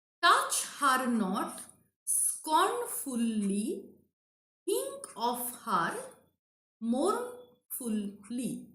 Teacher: one stressed syllable is followed by two unstressed syllables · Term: dactylic meter